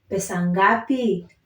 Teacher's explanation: So pesa ngapi, how much. So I'm trying to stress on the last syllable because it's a question